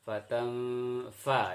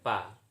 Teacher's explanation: Fatanfa ya, bukan pa. Jadi pengucapan fa itu antara ujung gigi atas dengan bibir